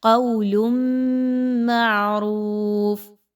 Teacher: اب اس میں دیکھیں تو تنوین کے بعد میم آ گئی تو آپ نے اس کو اچھے سے غنہ کرتے ہوئے پڑھنا ہے. تنوین کی آواز کو ہم میم کی آواز کے ساتھ ملا رہے ہیں، یعنی ایکچولی ہم نون کی آواز کو میم کے ساتھ ملا رہے ہیں.